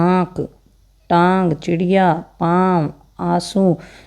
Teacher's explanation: नाक में आवाज़ आती है इनकी, ये है अनुनासिक, जो नासा से बोला जाता है, मतलब नाक से बोले जाते हैं। नाक में इनकी आवाज़ आती है।